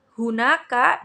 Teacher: keluarnya huruf pada bagian tenggorokan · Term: glottal